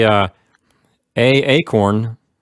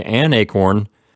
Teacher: If you say a acorn, you're making two vowel sounds in a row. A and then acorn, the A that's in the word a, and then the A that's at the beginning of the word acorn.